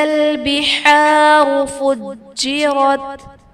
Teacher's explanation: جیم حرف قلقلہ مشدد ہے تو یہاں پر قلقلہ خوب جماؤ کے ساتھ ادا کریں گے